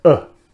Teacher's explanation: before a retroflex consonant this vowel is centralized it's moved down and in fact becomes uh so this is perire man if